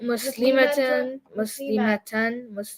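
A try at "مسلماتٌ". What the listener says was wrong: See, the ma was too long? You caught it?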